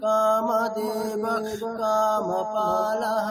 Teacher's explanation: এমন একটা খকার উচ্চারণ করবেন যেটাতে ক এবং খ দুটোর একটা মিশ্রণ পাওয়া যায়, একটা মনে হচ্ছে যেন দুটো মিশিয়ে উচ্চারণ করছেন, ক এবং খ মিলিয়ে উচ্চারণ করছেন।